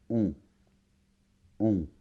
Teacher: C'est un peu comme un O, mais ça vibre plus vers le nez. Je ne vais pas détailler ici, mais c'est on. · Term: voyelle nasale